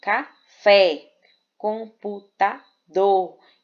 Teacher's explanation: Então, a última sílaba é a sílaba mais forte, ou seja, a sílaba tônica. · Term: oxítona